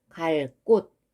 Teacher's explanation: 이럴 경우에도 이 뒤에 그가 된소리로 바뀌어서 갈 곳 요렇게 발음이 되겠네요. 요런 경우도 된소리 대기라는 거지.